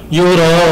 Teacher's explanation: Unnya kita panjangkan juga mat arid li sukun.